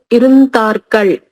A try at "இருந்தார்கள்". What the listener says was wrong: ఇరుంతార్గల్. తార్గల్ కాదు, ఇరుంతార్గలే వస్తుంది. మనకి ప్రొనౌన్సియేషన్ లో థా బదులుగా దా వచ్చేస్తుంది అంతే. ఇరుంతార్గల్. ఇరుంతార్గలే కరెక్ట్.